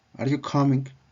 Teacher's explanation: La entonación sube en la palabra coming. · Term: entonación ascendente